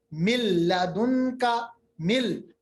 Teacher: اس کے برعکس اگر لام اور را آ جائے نون ساکن یا تنوین کے بعد تو ادغام تو ہوگا، ملے گا، ادغام تو ہوگا، ملنا تو ہے، مگر غننے کی صفت نہیں رہے گی، ناک کے اندر آواز نہیں لے جائے گی